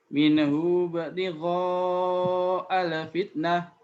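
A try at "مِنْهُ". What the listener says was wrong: Nah, nunnya jangan dipantulkan. Bukan minahu. Mina, tapi minhu.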